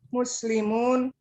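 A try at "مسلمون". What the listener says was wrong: Hebat.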